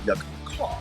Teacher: у Британській англійській часто не вимовляється R в кінцівки слова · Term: nonroic Accent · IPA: [kɑː]